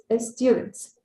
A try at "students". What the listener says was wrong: One more time, take away that E. Una vez más, pero sin esa E otra vez. Students.